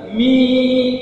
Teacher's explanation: miq huruf mim baris bawah berjumpa dengan huruf ya Mi panjang Mi itu keluar dari rongga mulut Mi tidak boleh lebih dominan rongga hidung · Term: Alya almaddiyah